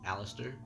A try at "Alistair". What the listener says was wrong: No T, just Alistair.